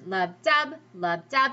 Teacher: So when we look at this poem, pretend that they're words, and our voice goes lub-dub, so we go down, up